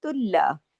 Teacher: और एक होता है तुल्ला, यहाँ पे बारीक करना है, क्यों, ता भी बारीक लेटर है और ये लाम भी बारीक है